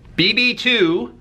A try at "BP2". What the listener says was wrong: You pronounced it wrong. You said BB2. It's BP2. The BP2 Connect.